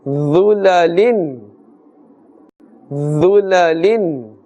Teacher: Dha is also part of huruf musta'aliyah, therefore the thicker sound must be made.